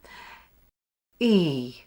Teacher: Place your tongue high and at the front of your mouth with your jaw fairly closed and your lips spread. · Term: long E sound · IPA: /iː/